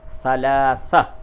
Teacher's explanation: تو ثلاثتن تا دو زیر تین تھا، اب اس جگہ پہ وقف کیا ہے تو ثلاثہ، یہ تا کو ہا سے بدل دیا